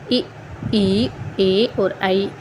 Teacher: अग्र स्वर है जो हमारे जीभ का जो अगला भाग होता है उसी से ये बोले जाते हैं। उसी से ही इनकी जो है वो उच्चारण होता है।